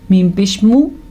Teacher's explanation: واو مدہ ہے لیکن میم کو لمبا نہیں کرنا، ہم پڑھیں گے میم پیش مو، را پیش واو رو، وَيَأْمُرُو، را کو پر ضرور پڑھنا ہے کیونکہ را کے اوپر پیش ہے۔